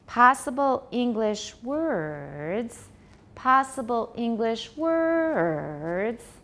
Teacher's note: So go up for the tonic, come down, tiny rise. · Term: continuation rise